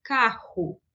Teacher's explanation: Não se deve confundir com la R gutural utilizada em outras regiões. Então, no Mato Grosso do Sul, a gente usa o R gutural